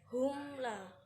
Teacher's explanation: Selanjutnya humla termasuk bacaan idhar syafawi, di mana mim sukun bertemu dengan lam kemudian dibaca jelas